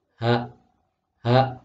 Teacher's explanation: diucapkan dengan halus meskipun letaknya di pangkal tenggorokan itu tidak boleh Kita mengucapkannya secara berlebihan misalnya hok hok karena · Maka kalau H diingat-ingat keluarnya di tengah, itu agak bersih suaranya H. Kalau H itu ada di pangkal tenggorokan. Kalau dirasakan juga, dadanya juga agak sedikit bergetar.